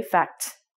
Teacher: When you sound the T, the air stops right away, fact. It doesn't continue like the S